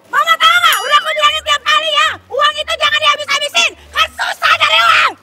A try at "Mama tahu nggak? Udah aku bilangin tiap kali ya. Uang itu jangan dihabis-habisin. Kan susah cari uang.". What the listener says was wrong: Kurang cakep. Kenapa? Karena terlalu monoton. Kalau antagonis itu nggak boleh monoton. Nggak begini-begini-begini dulu. Iya, harus ada berubah-ubah lagi.